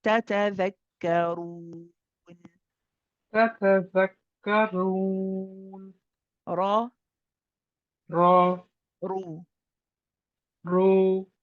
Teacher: I think this is the first time we're seeing in this surah a ra with a dhamma, which we also have to make heavy.